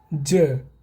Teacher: ज घोष एवं अल्प प्राण व्यंजन है।